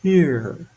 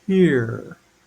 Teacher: the r is not at the beginning so I don't have to pucker my lips and there's no letter that causes me to have to pucker